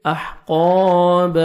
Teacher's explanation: فیہا احقاب، ہا کو اپنے مخرج سے ادا کریں گے تاکہ ہا میں ساؤنڈ مکس نہ ہو۔ قاف کو موٹا کر کے پڑھیں گے، 1 سیکنڈ کھینچیں گے